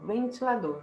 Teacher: Qual que é a sílaba tônica? A sílaba tônica é do, a última sílaba. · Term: oxítona